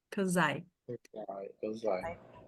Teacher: Aqui o esse S tem som de Z, tá?